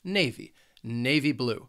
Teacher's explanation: the word has two syllables, and the stress is on that first syllable